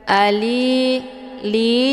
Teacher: li dibaca panjang 2 harokah atau 2 kali ketukan. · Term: mad tabi'i zahiri